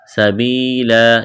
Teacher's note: سبیلا، یا مدہ ہے، الف کے برابر کھینچنا ہے، وقف کریں گے، دو زبر کی تنوین کو الف سے تبدیل کرنا ہے۔